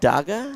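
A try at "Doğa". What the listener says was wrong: It's DOA. The G is silent.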